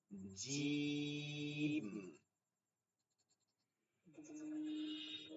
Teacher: শক্ত, জিহ্বার মধ্যখানটা তালাতে লাগায়।